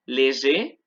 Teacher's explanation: Léger, se pronuncia la E pero no la R. Y aquí sí las dos.